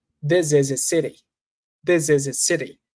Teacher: I connect everything. I remove the letter H.